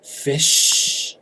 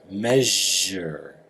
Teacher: So a word that ends in fish or measure. You hear the voice vibrating on the j sound